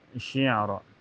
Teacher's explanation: Ini ada ain sukun mutlak dan makhraj ain itu ya berada di wasatul halqi, di pertengahan tenggorokan ya. Tengah tenggorokan.